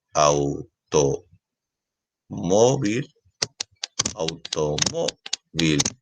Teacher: la fuerza de voz está en la penúltima sílaba es decir esa sería su sílaba tónica